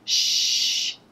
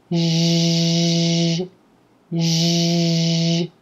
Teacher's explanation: voice or get your vocal chords involved to make this sound you want to go from the Shh which is voiceless meaning quiet air just passing through the vocal tract